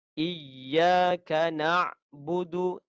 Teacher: huruf Ain dalam di leher kita. Hak huruf Ain ialah disebut dengan betul dengan sifatnya, contohnya tawassut dan lain-lain.